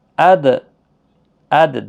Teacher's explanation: دیکھو دال پر قلقلہ ہوگا اگر ساکن ہم پڑھیں گے